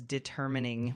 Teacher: The word is pronounced as determining with the emphasis on the second syllable.